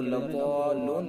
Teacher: الف حرف مدہ کے بعد تشدید ہے. اس کے اندر مد لازم کلمی مثقل ہوگا